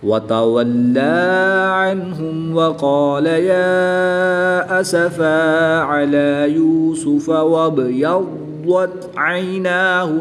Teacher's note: द्वाद और दाल की अदायगी में फ़र्क होता है, और जब द्वाद मुशद्दिद को पढ़ेंगे तो याद रहे कि इसमें कलकला हरगिज़ नहीं करेंगे